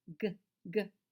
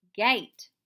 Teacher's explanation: Your voice box is turned on in gate. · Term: g sound